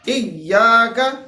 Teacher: سب سے پہلے ہمارے پاس حمزہ آ رہا ہے جو کہ اقصا حلق سے ادا ہوتا ہے